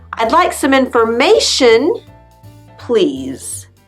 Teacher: your intonation goes up on the word before please, and then down on please